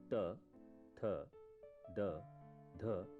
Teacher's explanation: दांत से त, थ, द, ध ध्वनियां उत्पन्न होती हैं।